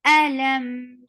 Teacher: We will get sifa of tawassut, and tawassut is a medium flow of sound. Look, the sound of meme flows, but not hamza.